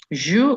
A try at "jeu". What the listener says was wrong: C'est pas joue, c'est je.